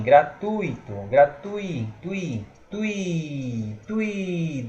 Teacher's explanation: o tui está informando que é um ditongo oral decrescente, certo? Porque ele vai caindo o som.